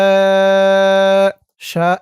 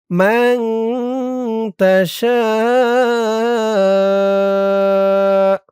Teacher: শা এখানে অনেক টান দিতে হবে। ৪ আলিফ টান।